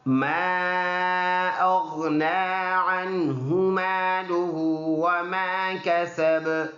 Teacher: ما دوبارہ چھوٹا مد 2 سے 3 الف کی مقدار لمبا کر کے پڑھنا۔ غین موٹا حرف ہے، گلے سے ادا ہوتا ہے، منہ بھر کر اس کو پڑھیں گے